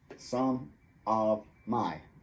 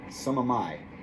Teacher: Elas linkaram some com of, e of é reduzido para a, e linkar a com my.